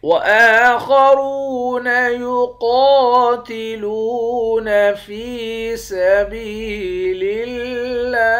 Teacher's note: وآخرون يقاتلون في سبيل الله، حمزے کے اوپر کھڑا زبر ہے، کھڑے زبر کو ایک الف کے مقدار کھینچ کر پڑھتے ہیں۔ خا اور را ان دونوں حرف کو موٹا پڑھیں گے، واو کے ساتھ ملا کر واو کو ایک الف کے مقدار کھینچ کر پڑھیں گے۔